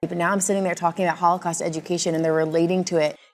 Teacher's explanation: She really slowed down when she said the words Holocaust education. These are big content words and they're absolutely stressed.